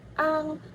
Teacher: Bunyi ang, final sengau belakang. Ketika melafalkan bunyi ang, pelafalan A terpengaruh oleh eng, sehingga A dilafalkan dengan posisi lidah yang agak mundur ke belakang. Rongga mulut juga lebih terbuka dibandingkan pelafalan A sebagai vokal tunggal.